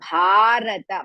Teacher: ಭಾ ಇಸ್ ಮಹಾಪ್ರಾಣ as well as ದೀರ್ಘ · bha is Mahaprana as well as Dirga